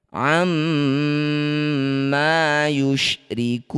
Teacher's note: Jadilah bacaan namanya madrid bisukun. Cara bacanya ku panjangkan enam harakat. Huruf terakhir sukunkan. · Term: mad arid disukun